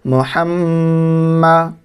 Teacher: میم کے اوپر تشدید ہے تو گنہ کرنا ہے